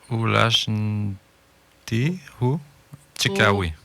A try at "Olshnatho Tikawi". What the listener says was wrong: Olshnatho Tikawi. Le A se prononce pas, premier A, là. Olshnatho Tikawi.